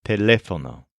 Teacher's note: It's pronounced a lot like telephone in English, but make sure to stress the second syllable